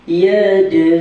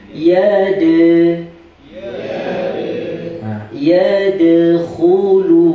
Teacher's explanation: Kemudian kita jumpa dengan qalqalah surah. Yang mana qalqalah surah ni sebutannya seakan-akan tambah huruf i.